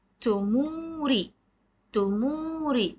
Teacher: The sound of meme is prolonged because of the long vowel wow coming.